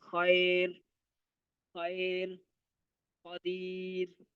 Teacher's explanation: را موقوفہ سے پہلے یا ساکن ہو تو را کو باریک پڑھا جائے گا۔